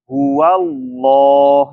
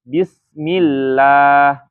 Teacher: jadi dibaca tafkhim ketika lafaz Allahnya didahului harakat fathah